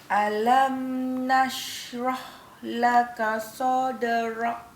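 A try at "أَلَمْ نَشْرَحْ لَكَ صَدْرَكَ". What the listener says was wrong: Sekali lagi kalau boleh, ra lembutkan sikit belakang tu. Kaf itu kena nipiskan dia. Rak. Buka sikit. Sadrak.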